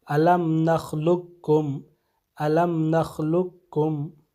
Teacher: جیسے الم نخلقکم، اصل میں الم نخلقکم ہے، تو یہاں پہ حرف قاف جو ہے حرف کاف میں ادغام ہو جائے گا، اور حرف قاف کی آواز نہیں آئے گی بلکہ حرف کاف کی آواز آئے گی